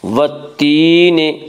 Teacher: والتین یا مدہ وہ یا جو ساکن ہو، اس سے پہلے زیر ہو، یا مدہ کو ایک الف کے برابر کھینچ کر پڑھیں گے